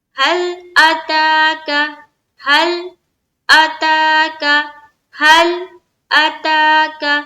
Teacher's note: لام میں آواز ہماری سٹاپ ہو جائے گی · لام میں ٹکراتی ہوئی آواز معلوم نہیں ہونی چاہیے۔ حل، لام کے مخرج کے اوپر اٹک جانی چاہیے آواز۔